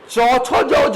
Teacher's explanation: मुंह के अंदर थोड़ा घर्षण भी पैदा होता है। चौछो जो को बोलने बेटा मुंह के अंदर क्या होता है, थोड़ा सा स्पर्श तो है ही है, लेकिन बेटा क्या होता है, थोड़ा सा घर्षण भी पैदा होता है।